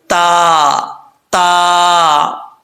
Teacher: تا کا مخرج ہے زبان کی جو نوک ہے اوپر والے دانتوں کی جڑوں سے لگے، اس کے لیے زبان کو اوپر کی طرف اڑنا لازمی نہیں ہے، تو اس کو باریک پڑھا جائے گا، تا تا، ٹھیک ہے؟